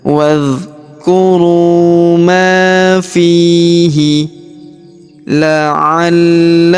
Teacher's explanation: huruf fi kita panjangkan dua harakat karena terdapat ya sukun di depannya